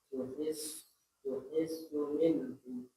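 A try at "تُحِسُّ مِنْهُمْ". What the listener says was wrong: Jangan mantul ya. Minhum.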